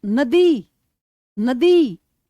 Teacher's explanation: तो द की sound तो दब रही है और ई की ज्यादा आ रही है